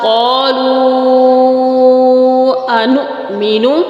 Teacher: حمزہ جھٹکے کے ساتھ پڑھا جائے گا